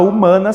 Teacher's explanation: h também não é contado né na palavra humanas por exemplo o h não produz som nenhum se ele não produz som ele não é contado como um fonema então a palavra humana humana possui seis letras e cinco fonemas